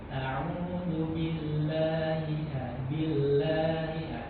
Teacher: Nah, ini lamul jalalah tipis saja. Auzubillahi billahi tipis karena dia didahulu kasrah.